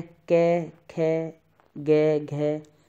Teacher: आपकी जीभ कहीं से स्पर्श नहीं करेगी और आप कंठ से बोलोगे